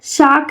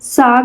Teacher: घोषीकरण का मतलब कहा जा रहा है कि अघोष ध्वनि यां घोष में बदल जाती हैं। मतलब बिना गले की जो आवाज वाला अक्षर होता है यानी कि गले की जो आवाज होता है जैसे क है क से ग बन जाता है।